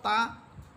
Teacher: তা হরফের মাখরাজ হচ্ছে জিহ্বার আগা সামনের উপর দুই দাঁতের গোড়ার সাথে লেগে তা হরফ উচ্চারিত হয় তো তা হরফ জিহ্বার আগা সামনের উপরে দুই দাঁতের গোড়া থেকে